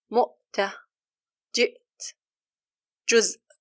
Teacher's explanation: There is no air coming out, only sound. The sound is blocked when pronouncing it due to the strong dependency on the articulation place, which is the vocal cords. This is prominent with the Sukun, such as mu'ta, jit, juz. · Notice how the sound is blocked and how the time of the inactive letter is very short. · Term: Hamza